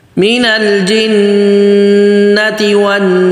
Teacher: اب آگے مینل واضح، مینل نہیں، مینل میم کے نیچے جو زیر ہے اس کو بالکل واضح، مینل جنتی، جناتی نہیں تو غنہ کرنا ہے ایک الف کے برابر، مینل جنتی والناس، واو بالکل واضح، نون پہ غنہ اور سین آخر میں واضح. اب سنیں، من الجنة والناس.